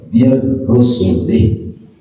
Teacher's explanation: karena ada wakaf lebih baik berhenti, maka tidak dibaca panjang, hi-nya disukunkan, min-nya idgham masuk kepada huruf ro, min jadi mir rusulih karena berhenti gitu.